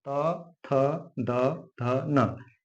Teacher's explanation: अगला होता है त वर्ण, त, थ, द, ध, न, इसे हम दंत व्यंजन कहते हैं। जब इन व्यंजनों का उच्चारण करती है जीभ तो दांतों को छूती है, दांतों को टच करती है, इसलिए इसे हम दंत व्यंजन कहते हैं।